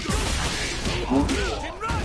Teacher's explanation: some Arabs, they wouldn't pronounce the Hamza